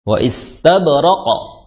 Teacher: qaf itu memiliki sifat kuat, kemudian dia karakternya sifatnya dia tebal karena dia memiliki sifat isti'la